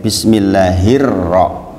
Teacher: Alif lamnya enggak kebaca di situ karena di situ ada Idgham Syamsiah dimasukkan langsung ke huruf syamsiahnya yaitu huruf Ro